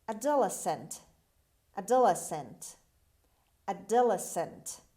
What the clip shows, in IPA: ˌædəˈlesənt